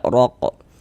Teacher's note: huruf ro memiliki harakat fathah dibaca tabhim juga dibaca tebal